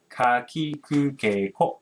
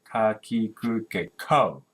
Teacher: you stop the airstream in the throat, right? And then we release the air, so it becomes very strong. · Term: very strong K sound